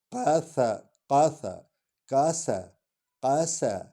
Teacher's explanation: قاف کو حلق سے اور سین سیٹی کی آواز نکلے گی